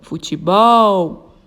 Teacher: ela é uma palavra oxítona, pois a sílaba tônica é o bol, é a última sílaba